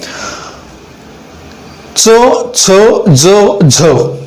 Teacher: च छ ज झ यांचा उच्चार करत असताना दात आणि टाळू यांचा एकमेकांशी संपर्क येतो आणि त्यांच्या संपर्कातूनच हे वर्ण तयार होत आहेत किंवा हे व्यंजन तयार होत आहेत. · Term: दंत तालव्य